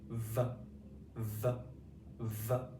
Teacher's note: V, V, V. Okay, your front teeth are kind of touching the bottom of your bottom lip there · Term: V sound